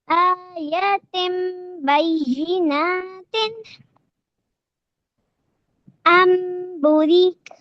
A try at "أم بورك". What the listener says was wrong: بو کو اسٹریچ کرنا ہے، بورک.